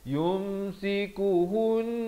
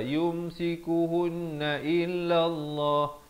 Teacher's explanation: di sini kena dengung dua harakat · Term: wajibul ghunnah